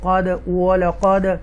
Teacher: یہ دال ساکنہ ہے، ایکو ساؤنڈ کے ساتھ پڑھیں گے ہم، قد وَلَقَدْ عَفَى اللَّهُ، یہاں پر تفخیم کے ساتھ اللہ کے نام کو پڑھیں گے، عنہم اظہار کریں گے، یہاں تفخیم کے ساتھ پڑھیں گے، واو مدہ ہے کھینچ کے پڑھیں گے، یا مدہ ہے کھینچ کر پڑھیں گے۔